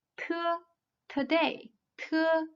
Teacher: Next one, te, is an alveolar voiceless and alveolar plosive. Its position and manner of articulation are the same as those of de, but it is aspirated, with no vibrations of vocal cords. It sounds like te of today.